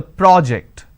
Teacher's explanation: When I'm stressing on the first syllable, it becomes a noun.